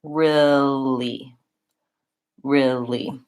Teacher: that first eel in real, gets shortened and reduced to an I sound